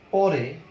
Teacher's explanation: জিহ্বার অগ্রভাগ কাঁপিয়ে আলতোভাবে দন্তমূল স্পর্শ করে এই ধ্বনিটি উচ্চারিত হয়। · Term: দন্তমূলীয় ধ্বনি